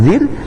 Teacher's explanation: huruf ro sukun di dalam harakat kasrah dibaca dengan tipis yaitu tarqiq